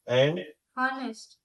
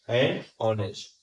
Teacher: अब जब हम लोगों ने लिखा है, जो वर्ड वो स्टार्ट हुआ है कॉन्सोनेंट से, लेकिन जब प्रोनाउंस करने तो एच ओमिट हो रहा है, क्या आ रहा है, ओ आ रहा है, इसके लिए हमने क्या यूज किया है, एन।